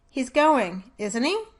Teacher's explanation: Listen to the falling pitch for the statement followed by the rise for the tag question